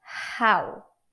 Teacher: the sound is simply the friction caused by the air expelled through the gap between your glottis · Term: glottal consonant